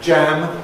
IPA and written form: ʤæm (jam)